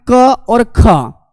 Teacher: क और ख, इसमें कोई कंपन नहीं होता। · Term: अघोष